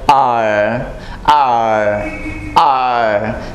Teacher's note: rolling it back like r r r so this pronunciation will be quite American